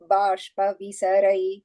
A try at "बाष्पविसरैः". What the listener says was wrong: Shita bashpa visaraihi. Visarga there.